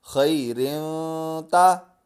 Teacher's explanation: خایا زبر خی، را دو زیر روں، خیروں، تا زبر تا، خیروں تا۔ اب یہاں دو زیر آ گئے تو یہ تنوین کے بعد تا حروف اقفا میں سے ہے تو ہم غنہ کریں گے۔